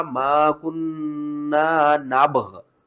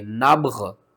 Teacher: با غین دونوں اکٹھے ساکن ہوں گے اور اکٹھے ہی وقف کریں گے